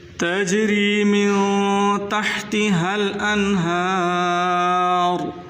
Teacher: रा को मोटा करके पढ़ना है।